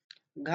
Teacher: घा घोष महाप्राण है।